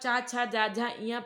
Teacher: आपकी टंग जो है वो तालू को टच कर रही है